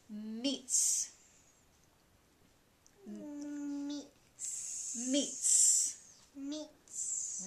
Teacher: the sound it's like a TS or a TZ when you write it in English kind of sounds like a sizzling pan to me